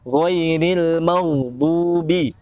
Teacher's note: huruf gha itu tidak memiliki sifat qalqalah atau memantul ya. Jangan dibiasakan membacanya seperti seolah ada memantulnya.